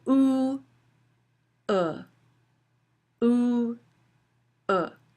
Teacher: again o which is a high back tense vowel o to uh as in book uh is a LAX vowel